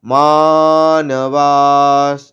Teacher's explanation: এখানে বিসর্গটা তালবর স এর মতো শোনাবে, আর দীর্ঘস্বরগুলো দীর্ঘ করে নিয়ে বলবো।